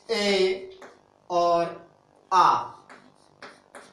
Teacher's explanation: तो सबसे पहले दोस्तों इसकी बात करता हूं, स्वर कौन कौन से हैं जो कंठ से बोले जाते हैं। तो स्वर है ए और आ, जो कंठ से बोले जाते हैं